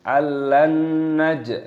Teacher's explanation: tidak boleh kita langsung allan naj, harus didengungkan terlebih dahulu · jimnya berharokat sukun, ini dimatikan dan dikolkolah, dipantulkan suaranya